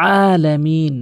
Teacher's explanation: এখানে আইনটি হলকের মাঝখান থেকে উচ্চারণ করতে হবে।